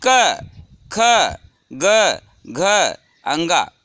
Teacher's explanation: क वर्ग का पूरी तरह कंठ से उच्चारण होता है। जिह्वा का स्पर्श पूर्ण रूप से कंठ से होता है